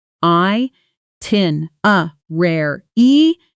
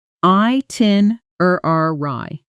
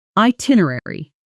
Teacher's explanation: Four syllables, stress on the second one.